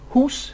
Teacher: the high back vowel o as in who